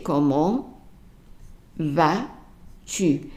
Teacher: comment here is not followed by a word that starts with a vowel, which means that the T is going to be silent